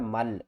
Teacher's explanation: اس کو من نہیں پڑھنا ہے، اس کو پڑھنا ہے مل، میم کو ہم نے لام کے ساتھ ملانا ہے، نون کو نہیں پڑھنا